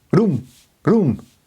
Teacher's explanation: Ooh is the dominant sound of that word, not the r or the m.